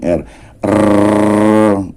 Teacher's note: Karena memang lidah, ya, lidah yang menghasilkan bunyi ini berpadunya atau ketemunya atau bersentuhan dengan bagian atasnya itu bukan satu kali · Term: bunyi getar